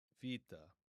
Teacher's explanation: in modern Greek pronunciation, it's going to be pronounced vita. Vita, making a v sound.